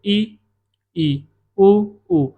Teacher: तो आपको लगेगा कि बहुत कम मुंह खोलना पड़ रहा है ना, मुंह कम खुल रहा है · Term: समृद्ध स्वर